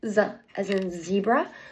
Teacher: The place of articulation is the ridge behind my top teeth. The manner of articulation is a fricative, and it is a voice sound.